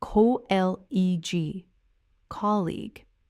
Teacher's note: Notice the stress lands clearly on that first syllable.